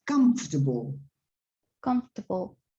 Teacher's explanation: the stress is on the first syllable on the left